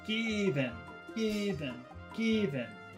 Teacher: I think normally I is a very short sound but here the accent falls on I so it becomes long